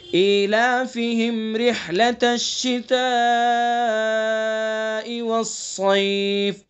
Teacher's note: شتاء مد ہوگا اس کے اندر، مد متصل، 2 الف سے کم کھینچنا جائز نہیں ہے اس کو، تو کم از کم 2 الف کھینچیں گے، زیادہ سے زیادہ 4 الف کھینچیں گے.